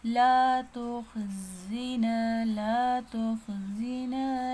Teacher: زا باریک پڑھیں گے اور زا میں باریک سیٹی ہے